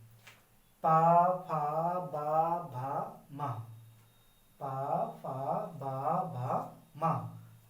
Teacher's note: जो पा वर्ग होता है इसको ओष्ठ माना जाता है। आप बिना होठों को मिलाए आपस में इनका उच्चारण कर ही नहीं पाएंगे। · आप बिना होठों को मिलाए आपस में इनका उच्चारण कर ही नहीं पाएंगे। आप कोशिश करके देखिए, पा फा बा भा मा, पा फा बा भा मा।